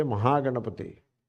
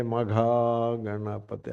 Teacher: Ha is becoming Ga